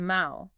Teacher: When you say the word for hand in Portuguese, it is ma with a deep nasal resonance. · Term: nasal vowels